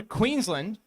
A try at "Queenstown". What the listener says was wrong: town, not Queensland. No. Town.